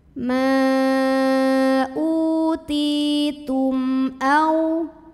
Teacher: Karena mim sukun ketemu sama huruf selain mim dan ba, yaitu huruf hamzah. Maka mim sukun dibaca jelas, jangan ditahan. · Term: idhar syafawi